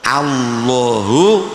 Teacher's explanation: Menyentuh gusi, tetapi suaranya terdengar lebih tebal. Jangan biarkan lidah menjuntai. · lidahnya nempel gusi tapi suaranya ditebalkan. Jangan sampai lidahnya gandul. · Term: lam